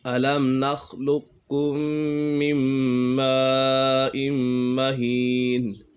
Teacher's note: میم مشدد میں ہمیشہ غنہ ہوتا ہے اور یہاں پر ادغام یرملون بھی ہے کیونکہ تنوین کے بعد حروف یرملون میں سے کوئی بھی حرف آ جائے تو ادغام یرملون ہوگا، یعنی غنہ کر کے پڑھیں گے.